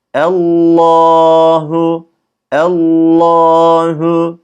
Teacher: Allah'tır ama orijinalinde Kur'an lafzında Allahu Allahu şeklinde e'yi ince yapıyoruz Lama bastığımız anda lafzatullah kalın telaffuz ediyoruz